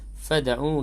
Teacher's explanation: dal yang sukun dalam kalimah tersebut qalqalah sughra, berdetak kecil